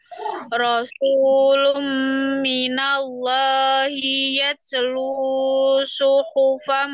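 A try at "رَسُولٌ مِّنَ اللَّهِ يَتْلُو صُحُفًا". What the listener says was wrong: Kepanjangan ya celuk dua harokat aja panjangnya lunya jangan buru-buru lumi lumi harus panjang suara gunanya Rasulum minallahi yatslu suhufan mutahharah.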